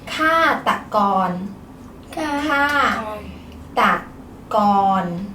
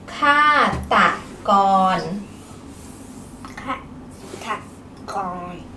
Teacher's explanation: Ka is falling tone. Ta is low tone. Gon is mid tone.